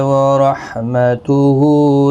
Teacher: ہا کے اوپر الٹا پیش ہے، اس کو ایک الف کی مقدار کے برابر کھینچیں گے